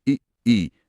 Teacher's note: आप बोलकर महसूस कर सकते हैं, ई जीभ का अगला हिस्सा, मतलब नोक के पास वाला हिस्सा ज्यादा सक्रिय है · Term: अग्र स्वर